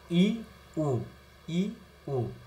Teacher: এই ইউ স্বরধ্বনি উচ্চারণের সময় ঠোট কিন্তু খুব বেশি প্রসারিত হয় না ঠোটটা কিন্তু গোল হয়ে যায় এজন্য এটাকে সংবৃত স্বরধ্বনি বলা হয় উই উ অর্ধসংবৃত অর্ধ সংবৃত